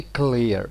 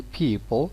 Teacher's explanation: So these two sounds belong to the same phoneme, clear and dark L. They are two realizations of L.